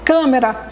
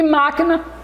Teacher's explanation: Câmera, A, com acento circunflexo, som fechado, e máquina, agudo, som aberto. Você fala com a boca mais aberta, certo, né?